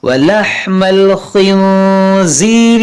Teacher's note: یہاں دیکھیں نون ساکن کے بعد زا, یہاں پر اخفا ہوگا